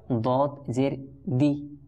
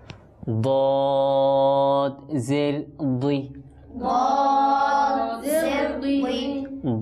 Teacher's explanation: কিন্তু দদের নিচে যখন জের হবে তখন দি হবে না, তখন এটা যেহেতু হরফে মুস্তালিয়ার হরফ এটা পুর হবে তথা মোটা হবে।